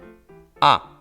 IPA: a